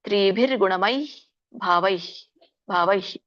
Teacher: ವಿಸರ್ಗ ಇದೆಯಲ್ಲ ಉಚ್ಚಾರಣೆ ಅಲ್ಪವಾಗಿ ಬರಬೇಕು ಈಗ ಹೇಗೆ ಬರಬೇಕು ಅಂದ್ರೆ ತ್ರಿಭಿರ್ಗುಣಮೈ ಭಾವೈಭಾವಹಿ ಅಂದರೆ ಸ್ವಲ್ಪ ಕೇಳಿಸುತ್ತೆ ಬಹಳ ಕೇಳಿಸಲ್ಲ